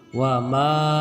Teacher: huruf ma dibaca panjang 2 harokat menjadi wa ma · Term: mad asli